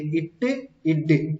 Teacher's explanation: இப்போ பாருங்க இட்டுக்கு tip of the டங்குமே அந்த டங்க் எங்கே போய் டிப் ஆஃப் த டங்க் எங்கே டச் ஆகுது அப்படின்னா அந்த டீத் ரிட்ஜில் டச் ஆகுது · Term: ஆல்வியோலர்